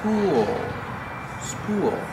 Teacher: use the long ooh like pool followed by the dark l